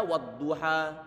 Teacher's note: Wadduha itu huruf terakhir berupa alif, sebelumnya fathah, maka dia bacaan matabi'i. Dia bacaan matabi'i hanya berhak dibaca 2 harokat walaupun dia di akhir kata. Bukan bacaan mad ardi suli sukun.